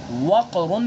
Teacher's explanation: تو یہاں سمجھا جا رہا ہے کہ ان حرفوں کے ادا کرتے وقت زبان کے بیچ کا تالو سے جدا رہنا، خاص زبان کی جڑ تالو سے لگے، جیسے وقرن کی قاف میں، دیکھیں زبان کی جڑ ہے نا، زبان کی جڑ یعنی پچھلا حصہ زبان کا وہ تالو سے لگ رہا ہے وقرن کے اندر، ٹھیک ہے، لیکن زبان کا بیچ جو ہے، زبان کا بیچ تالو سے نہیں چمٹ رہا ہے، صرف زبان کی جو جڑ وہ تالو سے لگ رہی ہے۔